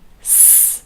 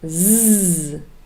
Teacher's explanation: s, also unvoiced, and z, very clearly voiced. S, no vibration, but z, very clear vibration from your vocal cords.